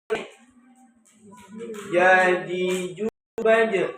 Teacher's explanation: Pangkal lidah. Nah, pangkal tengah lidahnya bertemu langit.